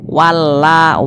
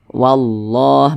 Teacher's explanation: Jadi kalau ada lafaz Allah, sebelumnya ada huruf yang memiliki tanda baca fathah atau tanda baca dhammah, maka lafaz Allahnya dibaca tafkhim, dibaca tebal